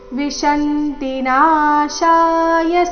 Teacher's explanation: ನಾಶಾಯ ನಾಶ ಎರಡು ದೀರ್ಘ